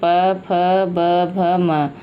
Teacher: ये 5 व्यंजन हैं जो ओंठों को स्पर्श करते हुए उच्चारित होते हैं, ओंठों को स्पर्श करते हुए, ओंठों को छूते हुए निकलते हैं। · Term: ओष्ठ वर्ण